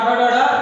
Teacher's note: टा ठा डा ये हो गया मूर्धा से